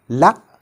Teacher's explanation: we touch the front of our tooth ridge with the blade of our tongue, right? But for producing any vowel sound after it, we have to separate our tongue from the tooth ridge, like lam fatha, la, lam kasra, li, lam dhamma, lu.